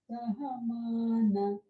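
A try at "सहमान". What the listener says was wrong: No. Hold the na. Na is udata.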